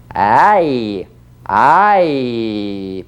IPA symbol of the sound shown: aɪ